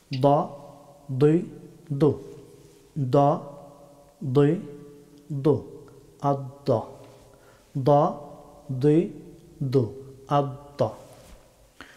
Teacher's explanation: জিহ্বার বাম অথবা ডান কিনারা, আদ্রাসে ওলিয়া, উপরের চর্বণ দন্তপাটির মূল, এইখান থেকে দদ হরফটি উচ্চারিত হয়।